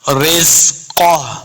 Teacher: ساتھ ملانا ہے، زا کو سختی کے ساتھ پڑھیں گے، رزقہ، قاف کو موٹا پڑھیں گے، قاف حروف مستعلیہ سے ہے